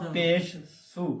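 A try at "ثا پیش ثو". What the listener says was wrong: ہاں سا پیسو نہیں کہنا، پیش بھی پوری بولنی ہے، سا بھی پوری بولنی ہے. ٹھہر ٹھہر کر سا پیش سو. اگر آپ کہیں گے سا پیسو، سا پیسو نہیں کہنا، باپے بو نہیں کہنا. یہ کیا، یہ الفاظ نہیں ہوتے.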